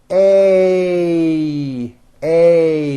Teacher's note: this sound is a combination of two vowel sounds you start with an a and then you glide up to an e a a notice how my mouth also closes a little bit · a and then you glide up to an e a a notice how my mouth also closes a little bit at the end of the vowel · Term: a sounds